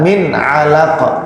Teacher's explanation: Min 'alaq, nun sukun bertemu ain izhar ya